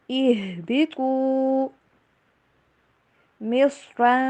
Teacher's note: رن نہیں پڑھنا بلکہ آواز کو چھپائیں گے، اخفا کریں گے